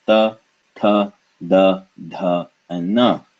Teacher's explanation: the tip of the tongue touching the teeth of the mouth and nowhere else